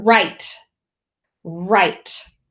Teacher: that WR is tricky. We only hear the R, right? So it is a vowel consonant E word, but it begins with a W.